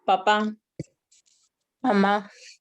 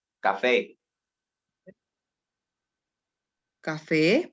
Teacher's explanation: tiene que llevar el acento en la última sílaba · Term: sílabas tónicas